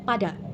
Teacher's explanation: konsonan dihasilkan dengan menghentikan aliran udara sejenak, lalu melepaskannya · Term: hambat letup